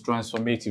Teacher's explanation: for transformative, the stress falls on the third to the last syllable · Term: antepenultimate syllable